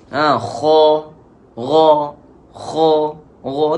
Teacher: Gha di awal tekak. Mula halkum juga. Gha dan juga kha.